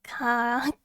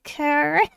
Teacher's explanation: There's, like, no R in there